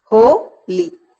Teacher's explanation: Ho is stressed and li is not. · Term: trochee